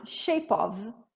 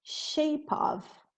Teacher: o E final, shape of, eu vou tirar, tira o E, junta o of e vai ficar assim, ó, shape of.